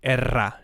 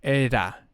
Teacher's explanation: a very soft no no bouncing of the of the tongue for this kind of examples where the r will go between two vowels it will be a soft r